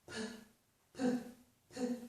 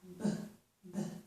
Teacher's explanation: this first sound releases more air when we make it than the second sound. And the release of that air is called aspiration.